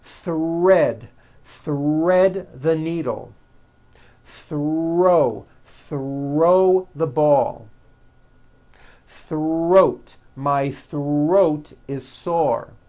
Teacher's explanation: the r is the strongest sound of the blend and is louder than the th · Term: th HR Blends